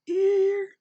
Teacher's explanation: it's a steady tone it doesn't change its pitch just stays high and it's as long as a full beat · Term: tone one